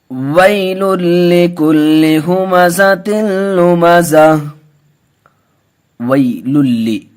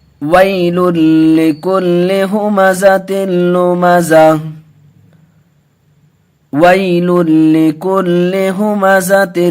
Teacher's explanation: وَي کو جلد پڑھیں گے، واو لین کا قاعدہ ہے، واو ساکن سے پہلے زبر ہے